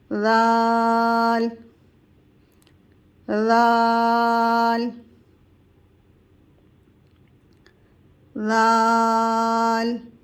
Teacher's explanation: जबान की नोक सामने वाले दांतों के किनारे से टच करेंगे यह सामने वाले किनारे हैं इससे नोक टच करेंगे ल ल · ذال کی ادائیگی بھی سامنے والے 2 دانتوں کے کناروں سے زبان کی نوک کو ٹچ کریں گے، جس طرح ہم نے پارٹ 1 میں تا کی ادائیگی کی تھی، تا کے مخرج سے ذال کی بھی ادائیگی ہوگی، یعنی زبان کی نوک سامنے والے دانتوں کے کنارے سے ٹچ کریں گے۔